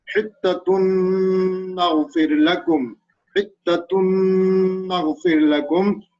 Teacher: After tanwin, nun comes, so we have to read with gunna and equal to 1 alif, because it is tanwin, and after tanwin, nun comes, and nun is the letter of idgham.